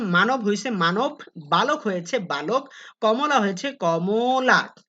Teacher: বলা হচ্ছে মধ্যবর্ণের অ সবসময় ও হয়